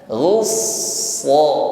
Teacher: yang pertama ketika menekan huruf shad ini yang pasti tampak sifatnya yaitu hamas ya, jarayanun nafs, alirkan nafas ya. Nafas mengalir.